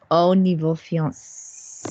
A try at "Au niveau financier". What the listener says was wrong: Not fiancé. You keep your fiancé out of this.